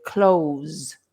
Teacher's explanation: they ignore the th and they just say the Z so they say close like to close the door and it sounds exactly the same as to close the door